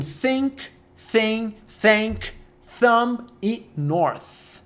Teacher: Voiceless é aquele que é o som de S com a língua presa